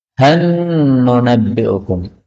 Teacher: Han nunabbi'ukum. Han, karena idgham maka lamnya hilang menjadi nun